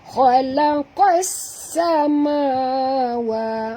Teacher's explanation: Bunyi sin yang angin yang berdesir ya. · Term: sofir